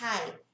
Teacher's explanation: ele é um som mais forte, mais acentuado, mais soprado · Ele tem esse som mais soprado, não é um R de rato